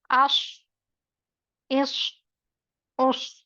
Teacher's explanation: तीनों का अगर आप पढ़कर देखेंगे तो अश हर्फ मोटा है लेकिन सीटी की सी आवाज आ रही है, महमूसा हर्फ भी है तो एयर फ्लो भी होगा। आश मुस्तालिया है, मोटा पढ़ा जाएगा। सफीरा है, सीटी की सी आवाज आएगी। महमूसा है, हम्स की कैफियत होगी। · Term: स्वाद